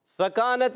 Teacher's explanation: फकानत में फा पर ज़बर है, फा की अदायगी होती है ऊपर वाले दांतों के किनारे, जब नीचे वाले होंठ के तर हिस्से से लगते हैं तो अदा होता है फा। अच्छा यहाँ पर हरकत है, खींचेंगे नहीं, याद रखना है।